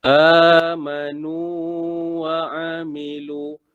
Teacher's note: Nu tu kena panjang dua harakat. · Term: mad tamkin